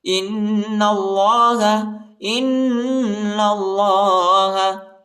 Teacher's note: حمزہ کو نون کے ساتھ ملائیں گے اور غنہ کریں گے